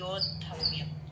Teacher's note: యో నుంచి ఒక దా పట్టుకున్నట్టు, కింద ధా ఏమో మహాప్రాణం